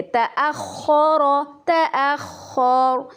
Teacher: خو کو ہم تلفظ میں پر پڑھیں گے، تأخر تأخر۔